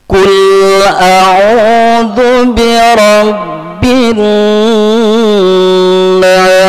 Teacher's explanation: Kemudian kul, tolong lam sukun tidak termasuk huruf qalqalah, tolong tidak dipantulkan. Jangan kul a'u, ya, itu terpantul.